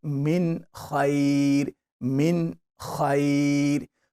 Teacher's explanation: Read it clearly. Don't apply any gunna sound. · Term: Izhar